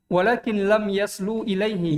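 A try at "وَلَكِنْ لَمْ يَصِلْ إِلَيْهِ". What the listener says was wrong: Yasi di kasro sinnya karena ini asalnya yausilu. Kan dihilangkan wawunya. Yasilu.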